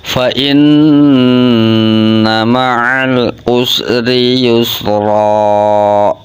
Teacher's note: Ketika ada huruf nun atau mim yang bertasdid, hukum bacanya ghunah musaddadah. Ghunah itu suara yang berdengung, musaddadah dan banget dengunge.